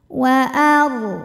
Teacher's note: Huruf ra sukun dibunyikan secara tafkhim Karena harokat huruf sebelumnya fathah, maka ro-nya ditebalkan.